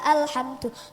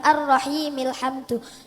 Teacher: Jika permulaan hamzahnya dibaca alhamdu, jika tidak di permulaan hamzahnya hilang, ar-rahimil hamdu.